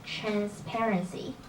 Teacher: the stress is on the second syllable not transparency so the correct one is transparency I think you